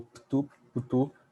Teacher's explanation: O U, de novo, é mais uma vogal epentética.